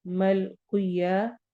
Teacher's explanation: कॉफ को मोटा पढ़ना है